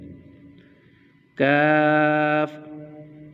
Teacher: जुबान की जड़ और तालू के सख्त हिस्से से अदा होता है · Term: काफ